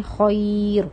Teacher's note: را سکون میں ہم وقف کر رہے ہیں، یا ساکن ہے، پیچھے تو زبر ہے، لیکن تب بھی ہم را کو باریک پڑھ رہے ہیں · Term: باریک را